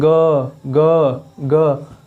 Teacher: ग बोलिए, ग कंपन हो रहा है ना, स्वर तंत्र में कंपन हो रहा है, इसलिए इसको बोलते हैं सघोष।